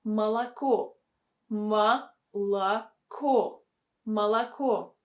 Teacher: the first two syllables with the letter O should be pronounced with the sound A.